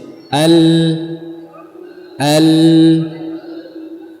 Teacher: makhrajnya huruf lam dari adnaat lisan ujung dua sisi lidah ya bertemu dengan ujung langit-langit atau gusi